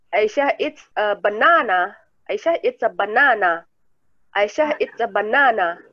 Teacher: Jadi Aisyah makan pisang, bukan dia menggambar pisang, tapi dia makan pisang. Kita emphasize-nya di makannya.